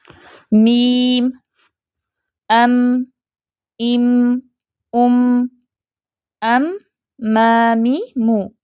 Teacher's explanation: आवाज होठों के बाहर वाले हिस्से में बनना शुरू होती है जो मीम का मखर है ठीक है और नाक से निकलकर बाहर जाती है · मीम की आवाज़ अपने मखरिज पर बनती है और हल्के फितरी गुन्ने के साथ खैशूम से निकलकर मुकम्मल होती है